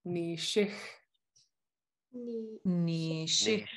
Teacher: It's friction. It's a little bit of friction of your airflow in the top of your mouth. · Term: regular X